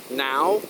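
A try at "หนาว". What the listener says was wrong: Like a now but extended, so now. Think of meow but with an N.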